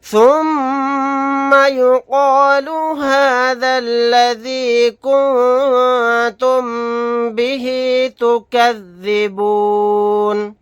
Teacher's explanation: نون ساکن کے بعد تا آ گیا، تا اخفا کے 15 حروف میں سے ایک حرف ہے تو یہاں پر ہم اخفا کر کے پڑھیں گے